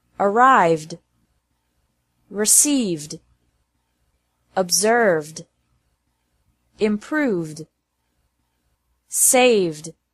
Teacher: it's also pronounced like d after verbs and ending with a V sound